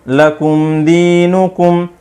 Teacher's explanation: یہاں پر اظہار شفوی ہو رہا ہے، غنہ بالکل نہیں کریں گے، جلدی سے پڑھیں گے